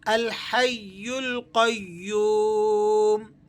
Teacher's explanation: یا پر تشدید بھی ہے تو آپ نے تھوڑا سا اس کو جماؤ کے ساتھ اور مضبوطی سے ادا کرنا ہے